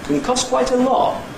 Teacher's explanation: the next little word group is a High Head and a High-Fall Nucleus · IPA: kəŋ ˈkɒs kwaɪt ə ˋlɒt